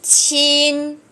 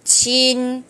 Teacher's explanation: Chữ này chúng ta phải bật hơi ra ha.